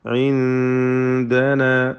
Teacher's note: ഇൻദനാ ഈ പദത്തിൽ സാക്കിന നൂൻ ഇഖ്ഫ ഹഖീഖി നൽകി അവ്യക്തമാക്കി മണിച്ചുകൊണ്ട് ഉച്ചരിക്കേണ്ടതാണ്.